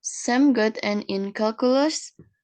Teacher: with a rising intonation High final pitch indicates a question